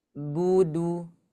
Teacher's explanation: Jadi misalkan kalau kita baca du sama bu itu harus sama. Jangan sampai bunya tipis, dunya tebal.